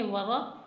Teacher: را کو موٹا پڑھنا ہے کیونکہ را کے اوپر زبر ہے